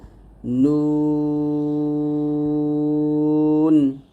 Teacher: জিহ্বার আগা তার বরাবর উপরের তালুর সঙ্গে লাগবে